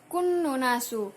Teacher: Itu adalah hukum bacaan guna musadadah karena ada huruf nun yang bertasydid, cara membacanya cukup mendengung